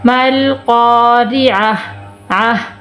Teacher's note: ہم اس کو ہا بنائیں گے، لیکن ہا بھی پوری نہیں پڑھیں گے، وقف کی صورت میں ہم ہا کو ساکن کر دیں گے